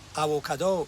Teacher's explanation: So the V becomes a W.